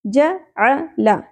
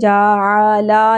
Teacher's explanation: Single حرکات، زیادہ نہیں کھینچنا، جعلا نہیں پڑھنا.